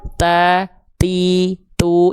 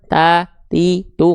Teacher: Jangan lupa huruf ta dilafalkan ada percikan nafasnya ya.